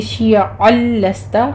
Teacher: عین وسط حلق سے ادا کرتے ہوئے